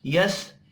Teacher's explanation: सीन साकिन पर कलकला नहीं करना